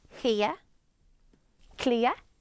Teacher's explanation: It almost sounded like there was a Y at the end, like yeah.